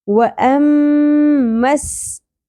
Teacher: میم کے اوپر تشدید ہے، غنہ ہوگا، لیکن میم کی زبر سین کی تشدید کے ساتھ مل جائے گی